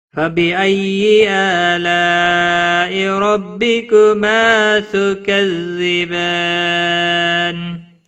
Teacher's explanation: نون وقف کی صورت میں نون ساکن پڑھا جائے گا. وقف بالاسکان ہوگا، 3 سے 5 الف کے برابر کھینچ کر وقف کریں گے. مد العارض وقفی ہوگا.